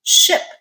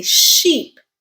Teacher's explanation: A lot of Spanish speakers, when they're trying to say the I sound, will instead produce the E sound.